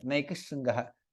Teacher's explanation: There is no Sakara. Sha becomes double there.